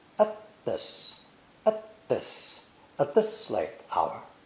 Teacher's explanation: the word at has been eliminated entirely because this TTH sound is too slow for conversation.